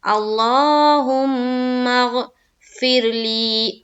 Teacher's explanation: زیر ہے تو را باریک رہے گی